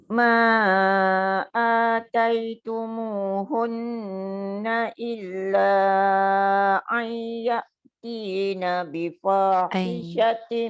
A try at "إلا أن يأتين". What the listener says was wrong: Illa ai, dia jangan ai. Kalau ai dia jadi ain, dia hamzah kan. Illa ai dia baru masuk nun tu dengung. Depan tu jangan ain.